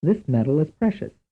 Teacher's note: In everyday American English speech, the word spelled M-E-D-A-L and the word spelled M-E-T-A-L may both represent something that sounds the same, metal.